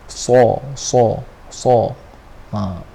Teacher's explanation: Huruf sad ni nak sebut dia macam mana? Kita tebalkan sikit. Sa. pangkal lidah kita naik.